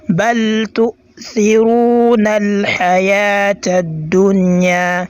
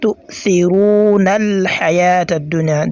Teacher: The ra on the word تؤثرون, I elongate it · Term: al-mad al-asli